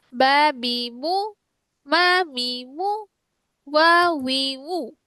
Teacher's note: বা হচ্ছে ঠোঁটের ভেজা জায়গা হতে, মিম হচ্ছে ঠোঁটের শুকনো জায়গা হতে, ওয়াও হচ্ছে ঠোঁটের মাঝখানে গোলাকার ফাঁকা স্থান হতে। ঠিক আছে? বা বি মু, মা মি মু, ওয়া উই উ।